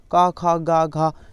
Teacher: का खा गा घा, ये कंठ से बोली जाती हैं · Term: कंठ ध्वनियाँ